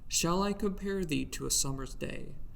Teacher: Pentameter means 5 meters or 2 syllables times 5. each flowing in iambs, or unstressed, stressed sound pattern. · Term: iambic pentameter